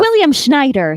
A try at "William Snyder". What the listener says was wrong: don't say Schneider. It's Snyder. It's Snyder. William Snyder. No, you said Schneider. God, don't say Schneider.